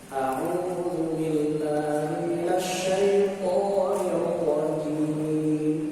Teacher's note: huruf jim punya sifat namanya syiddah dan sifat jahr